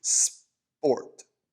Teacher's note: like the english sound in sp in like sport that that that p sound is actually a crisp b